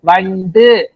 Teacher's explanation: ஒரு மாத்திரை அளவு ஒளிக்காம பாதி அளவுக்கு குறுகி ஒளிக்குது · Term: குற்றியல் உகரம்